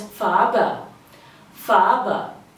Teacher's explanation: Think of saying far but with a very softened R and add it with a B. So it becomes Farbe.